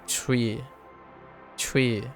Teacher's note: there's a t sound, a subtle t sound, but then it becomes we